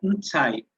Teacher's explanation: Eu pronuncio uma consoante nasal antes do nome. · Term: Pré-nasalização